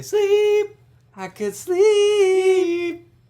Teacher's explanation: they don't pronounce the p